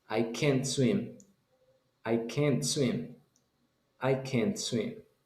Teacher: Y la palabra se va a pronunciar como E cuando es de una manera negativa. · En una frase, esa T no suena. En inglés americano, si lo dice rápido, esa T no suena. Se detiene antes de esa explosión.